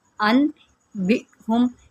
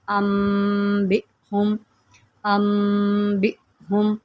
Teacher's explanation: یہاں پر بھی ہم نے جو ہے، ویسے تو یہ بن رہا تھا ان بہم، کیونکہ یہاں پر نون ساکن کے بعد حرف با ہے تو اقلاب ہو رہا ہے، تو اب ہم نے نون کو چھپا دینا ہے اور میم میں گنہ کر کے پڑھنا ہے